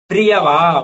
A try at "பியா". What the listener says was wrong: பிரியா இல்ல PIYA பியா. பியா பியா இல்ல சார் பியா.